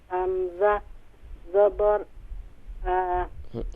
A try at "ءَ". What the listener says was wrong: حمزہ زبر آ نہیں ہوگا، حمزہ شارٹ ساؤنڈ کریں گے اسے.